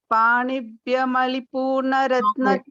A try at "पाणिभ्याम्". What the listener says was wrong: Panibhya. It's a dhirgam there.